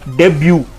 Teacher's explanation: So इसकी pronunciation जो है वो है DEI hyphen BYOO. तो इसमें हमें ये ध्यान रखना है कि हमें स्ट्रेस ज़्यादा करना है ब्यू पे